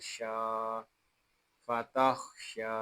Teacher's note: یہاں شین کو ہم ایک الف تک کھینچ کر پڑھیں گے کیونکہ یہاں کھڑا زبر ہے